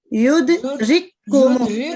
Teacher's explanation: رکو کو اکٹھا کریں کیونکہ کاف کے اوپر تشدید ہے نا تو اس کو ذرا مضبوطی سے ملائیں اس کے ساتھ